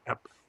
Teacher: notice that the next word starts with a vowel, and so it drops the ending vowel of epi